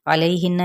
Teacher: یا لین اور نون پہ غنہ کرنا ہے